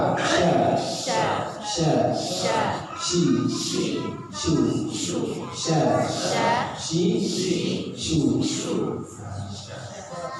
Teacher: Tafasyi menyebar udara. Jadi di mulut ketika kita sebut dan udara itu seperti menyebar.